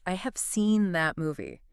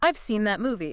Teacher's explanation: In natural speech, the auxiliary verb have or has almost disappears. It gets reduced to a tiny v or e sound. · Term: contractions